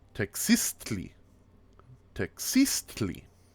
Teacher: the stress is always on the second syllable